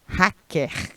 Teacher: Já os paraibanos trocam o L pelo R.